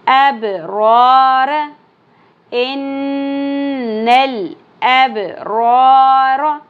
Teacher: با ساکن پہ قلقلہ ہوگا